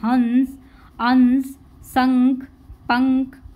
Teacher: अनुस्वार का उच्चारण नाक से किया जाता है। जब इनको बोलेंगे तो ये नाक के द्वारा बोले जाते हैं, जैसे हंस, अंश, शंख, पंख आदि।